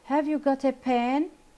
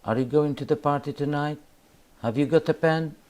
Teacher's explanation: So here I'm stressing and louding my voice when I say the word pen. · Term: rising intonation